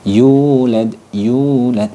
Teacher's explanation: Itu disebut dengan mad tabi'i. Cara bacanya yaitu dibaca panjang satu alif atau satu ayunan atau dua harokat.